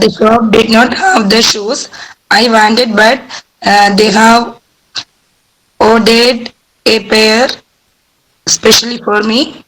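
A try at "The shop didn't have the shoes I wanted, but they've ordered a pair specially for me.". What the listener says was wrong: Now see, please, you have to pronounce the contraction. The shop didn't have the shoes I wanted or didn't have the shoes I wanted, but they have becomes they've. They've ordered a pair specially for me. Didn't have the shoes, but they've ordered a pair specially for me.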